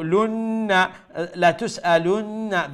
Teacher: that nun mushaddad is a wajib ghunna